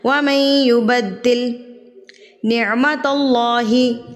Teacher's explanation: लफ्ज़ अल्लाह से पहले अगर ज़बर आ जाए तो अल्लाह पूरी यानी कि मोटा पड़ा जाता है।